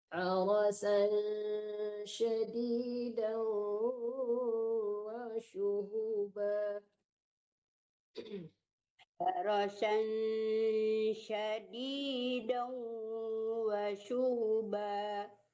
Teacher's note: Wasyu harasan disamakan ke shin ya, jangan harasan, jangan terlalu tertekan ke nun, tapi disamakan ke shin.